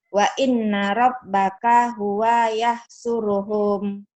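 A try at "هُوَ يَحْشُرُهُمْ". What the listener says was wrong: Home-nya nggak ada yang panjang, Bu. Wa inna rabbaka huwa yahsyuruhum. Wa inna rabbaka huwa yahsyuruhum. Wa inna rabbaka huwa yahsyuruhum. Wa inna rabbaka huwa yahsyuruhum. Wa inna rabbaka. Wa inna rabbaka huwa yahsyuruhum.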